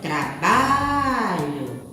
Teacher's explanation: na palavra trabalho, a sílaba tônica é a sílaba ba.